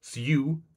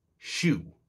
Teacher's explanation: So it underwent palization where the su became shu. This is an example of a wider phenomenon called yod coalescence where certain consonant clusters featuring the palal approximate undergo a fusing to become a sibilent.